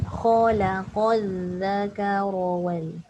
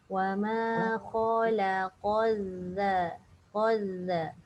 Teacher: Khalaqal qaf tebal zal nipis.